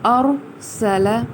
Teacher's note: را حالانکہ ساکن ہے لیکن ہم نے اسے پر کیوں پڑھا؟ کیونکہ اس سے پہلے زبر موجود ہے